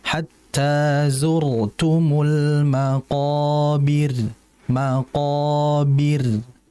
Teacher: Nah, al-maqabir tipiskan ra-nya.